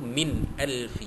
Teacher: maka dinyatakan bunyi nun mati itu min alfi, ya, tanpa dengung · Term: izhar halqi